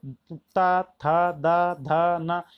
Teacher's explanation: इन सब में आपकी जीभ दांत से लगती है, तो इसी को बोलते हैं दंते व्यंजन।